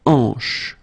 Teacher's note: H here is not pronounced, so you get the sound en, hanche at the beginning.